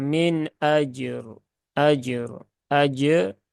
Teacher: jimnya kolkolah, berarti kolkolahnya itu dikeluarkan, kemudian roknya dia sukun ya. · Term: qalqalah jim